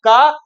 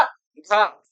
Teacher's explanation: अब का उच्चारण करते हैं तो का के उच्चारण में क्या होता है, का मतलब हम जिसको जितने कम वायु प्रवाह से बोलते हैं, ठीक है, का बोलने में हमारा, हमारे मुख से जो वायु निकल रही है वो कम निकल रही है। हम घा का प्रयोग करेंगे तो घा का प्रयोग करने में हमारा थोड़ा दीर्घ जाता है और देर तक हवा मुख से हमारे वायु बाहर निकलती है, ठीक है। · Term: अल्प प्राण